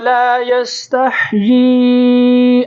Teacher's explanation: ہا کی آواز نکالنی ہے اور یا کے اوپر مد ہے، اس کو کھینچنا ہے۔